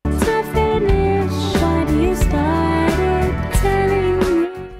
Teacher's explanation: We'll edit the word what by changing the phoneme T to D.